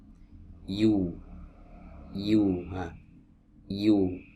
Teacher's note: ada di tengah lidah bertemu dengan langit-langit di atasnya